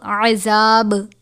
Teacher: وقف مطلق کی صورت میں با ساکن ہو جائے گا اور با پر کلکلا کریں گے